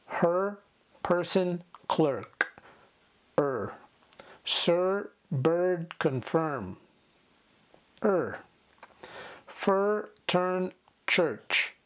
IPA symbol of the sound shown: ɜː